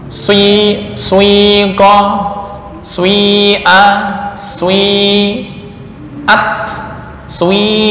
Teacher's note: Ukurannya sepertiga untuk dhammah dan 2/3 untuk kasrah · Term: ismam